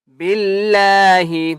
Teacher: یہاں پر ہم نے اللہ کا نام موٹا نہیں کرنا کیونکہ اللہ کے نام سے پہلے با کے نیچے زیر ہے